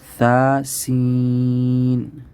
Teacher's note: اس میں تھوڑا سا آپ کو فرق کرنا پڑے گا کہ پہلے والا جو ثا ہے یہ نرمی سے پڑھا جاتا ہے، اپنے زبان کی نوک کو سامنے والے 2 دانتوں کے ساتھ لگا کے، اور سین پہ تھوڑی سی سیٹی کی آواز